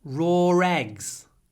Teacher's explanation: in British English you can hear this linking r